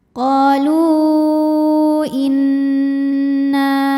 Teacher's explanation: maka huruf lam dipanjangkan boleh empat boleh lima harakat